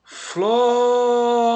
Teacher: A que se prolongou é fló. Então, essa aqui é a sílaba tônica. Temos a última, a da, temos a penúltima, uri, e temos a antepenúltima, fló.